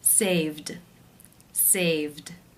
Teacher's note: For example, the verb to save. The final sound is the v voiced consonant sound, so the ed will take the d voiced d sound ending.